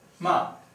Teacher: The fourth tone is probably the easiest one, and it's a high falling tone, meaning the pitch starts at high and it goes to low.